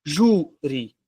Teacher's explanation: Qual é a sílaba tônica de júri? Ju. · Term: paroxítona